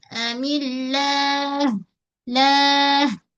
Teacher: Sebab sebelum lafaz Allah mim berbaris di bawah, jangan baca millah tapi millah. Okey, pada ha dekat ujung tu kita alir dan jaga dia punya alir suara, disebut dengan rakhawah